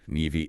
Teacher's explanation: the locally preferred and generally accepted standard pronunciation stresses the second syllable with a short a sound like in cat.